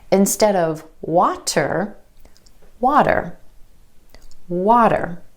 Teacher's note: The flap T is really just a D sound, and this flap T happens when T is in the middle of words in between 2 vowel sounds.